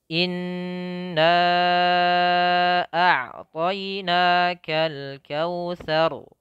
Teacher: 4 harakat. Jadi nanti dibacanya pertama ditahan gunnahnya 2 harakat, kemudian na-nya 4 harakat. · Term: mad jaiz